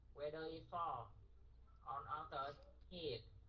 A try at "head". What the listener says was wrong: Head. Head. Cái đầu á. Head. Chứ không phải hit.